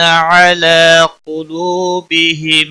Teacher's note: قاف حروف مستعلیہ میں سے پر پڑھا جائے گا